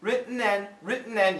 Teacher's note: don't move the tongue the tongue stays there that's the glottal stop sound that's the easiest way to make the glottal stop sound it